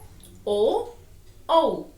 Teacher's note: छोटा और बड़ा ओ कहां से हमारे साउंड निकलती है, ध्वनि निकलती है, कंठ और ओष्ठ से। कंठ बोल के देखो, ओ कहां से आवाज आई, कंठ और ओष्ठ से।